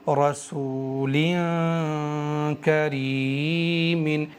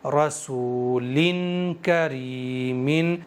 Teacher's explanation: وہ جو نون ساکن چھپا ہوا ہے دوسرے زیر کے اندر، اس نون ساکن کی آواز کو ناک میں چھپا کر پڑھیں گے، زبان کو ہوا میں رکھ کر کے پڑھیں گے · زبان کو میں نے ہوا میں رکھا ہے، مسوڑوں پر ٹچ نہیں ہونے دیا ہے، نون کو ناک کے بانسے سے ادا کیا ہے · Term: اخفا